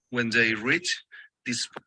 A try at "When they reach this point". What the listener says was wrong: See, he said that, reach. And then he paused unnecessarily. If he doesn't pause, he can pronounce it in the present and it sounds past. Reach this point.